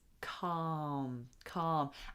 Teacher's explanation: We don't pronounce the L in that word.